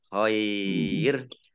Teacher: Ini hukum bacaannya adalah mat layin. Ya, khair mat layin dibaca panjang ya. Boleh 2 boleh 5 harokat.